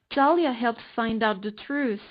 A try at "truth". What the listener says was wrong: you're missing the pronunciation of Truth so it's like truth not truth it ends with a T